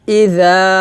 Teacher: এই জালটা জিহ্বার আগে উপরে দাঁতের আগে লাগিয়ে পাতলা করে উচ্চারণ করতে হবে